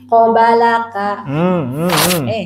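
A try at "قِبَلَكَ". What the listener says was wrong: Jangan panjang, jangan. Ki. Gabung. Nah, kan tadi asalnya kobalaka jadi pibalaka.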